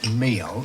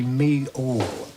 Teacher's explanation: where you have an l on the end of the word to attach a kind of ooh sound so that you don't say meal you say me all and